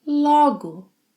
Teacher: Today's lesson is not about 'logo', it's about 'logo', with an open 'o' sound.